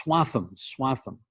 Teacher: it's pronounced swatham with kind of a th sound in the middle where you put your your tongue kind of up against the back of your teeth like you're saying tortilla in spanish it's swatham swatham so remember